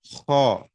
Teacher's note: خا جو ہے یہ بھی گلے سے نکلتا ہے، اتنا نیچے نچلے حصے سے نہیں نکلتا